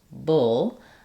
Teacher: If we have words with BLE, practice saying the word bull, which has the vowel, bull. I have that dark L, my back of my tongue stays down, the front of the tongue lifts. And then I'm going to really reduce and shorten the vowel.